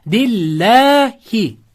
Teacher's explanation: So'z o'rtasida kelsa Alloh ikki harakat cho'ziladi